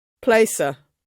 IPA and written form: ˈpleɪsə (Placer)